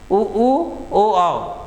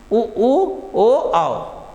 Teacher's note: अच्छा वृत्ताकार या वृत्त मुखी वर्तुलाकार वे स्वर जिनका उच्चारण करते समय ओष्ठ गोल हो जाते हैं।